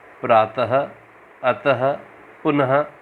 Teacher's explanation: विसर्ग, इसका उच्चारण आधे ह के समान होता है